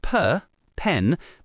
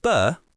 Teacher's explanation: With pen, your vocal cords aren't vibrating. It's just air. But with b, you feel that vibration. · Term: pllosives